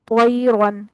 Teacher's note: और त्वयरन में तयरन नहीं, त्वयरन, यहाँ दोनों ही हर्फ जो है ना, तौ और रा दोनों पुर हैं